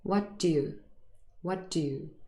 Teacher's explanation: It's an incredibly short little d sound